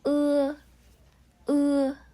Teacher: มันจะมีความแบบเหมือนขย่อนออกมานิดหน่อยนะ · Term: สระเอือ